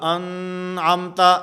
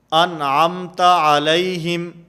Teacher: غنہ نہیں ہوگا، آواز ناک کے اندر نہیں جائے گی، بلکہ اس کو واضح کر کے ظاہر کر کے پڑھا جائے گا۔ جیسے سورۃ الفاتحہ کے اندر ہے صراط الذین انعمت، انعم نون ساکن، اور نون ساکن کے بعد حروف حلقی میں سے عین موجود ہے، اس لیے یہاں پر غنہ نہیں ہوگا، انعمت ایسے نہیں ہوگا، نون کو بالکل ظاہر کر کے پڑھیں گے، انعمت علیہم۔